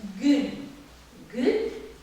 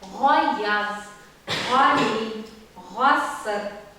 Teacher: А если после Г идет твердый звук, гасар, то и Г будет у нас более произнесенный при помощи маленького язычка